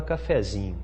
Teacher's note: A sílaba que era tônica, ela não vira sílaba átona, não. Ela vira sílaba subtônica.